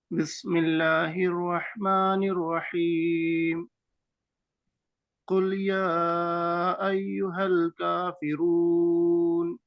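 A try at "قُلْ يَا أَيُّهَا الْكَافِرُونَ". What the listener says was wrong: را کو موٹا کرنا ہے، را کو پر کیجئے میرے بھائی.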